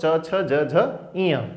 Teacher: तालु से निकलने वाले वर्ण कौन से हैं, तो च वर्ग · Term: तालव्य